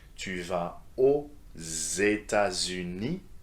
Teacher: be careful with the liaison when the country begins with a vowel